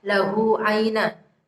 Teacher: Kemudian naj'al qalqalah sughra terletak di tengah kalimat, dan kemudian lahu aina, hak dhamir bertemu dengan ain, di depannya ada huruf hidup ain, itu disebut bacaan mad silah qasirah karena tidak bertemu dengan alif. Dan panjangnya cukup 1 alif atau 2 harokat.